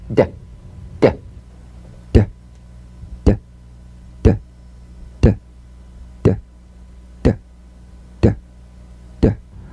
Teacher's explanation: Voiced tongue front palatal stop consonant. Play this D drum beat on the springing away of the tongue from the upper gum ridge.